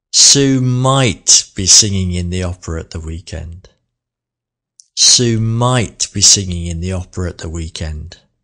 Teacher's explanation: let's put the emphasis on the modal verb might